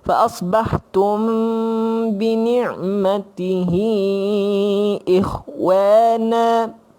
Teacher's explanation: ikhfa syafawi, mulut sama. Tutup mulut ringan.